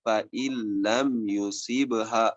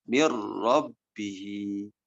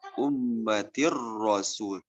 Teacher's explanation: Ada idgham bila guna, ada idgham tanpa harus digunakan, yaitu ketika ketemu huruf lam dan ketemu dengan huruf ro. Ini betul-betul bunyinya berubah menjadi huruf yang setelahnya tanpa ada efek guna apapun ya. Contohnya ini nun sukun bertemu dengan lam.